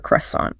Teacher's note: The stress is heavy on the first syllable.